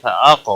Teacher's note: قاف ساکن پر قلقلہ ہوگا. قاف موٹا بھی پڑا جائے گا. حروف مستعلیہ میں سے ہے، پر پڑا جائے گا.